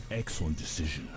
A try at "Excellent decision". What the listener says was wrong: You have like this excellent, like there's a little too much emphasis on certain things to try to sound more American, making it sound less American. like the way he says excellent.